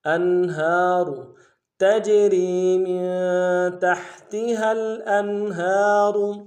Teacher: الانہار، حمزہ کو نون ساکن کے ساتھ ملانا ہے، اظہار ہوگا، ہا کے اوپر کھڑا زبر ہے، ایک الف میں کھینچیں گے ، را کو موٹا ادا کریں گے، انہار تجری من تحتها